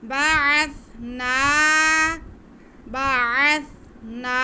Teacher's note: आगे नून पे खड़ा ज़बर है, उसको हम एक अलिफ के बराबर खींचेंगे।